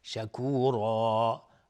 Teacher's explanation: را هم اینجا حکمش استعلاست چون تنوین نصب روشه، و شکورا و الف هم تابع را غلیظ تلفظ میشه. و عبدا شکورا، شکورا هم میشه مد عوض، عوضی از تنوین.